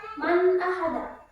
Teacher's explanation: nunnya itu dibaca jelas karena bertemu dengan hamzah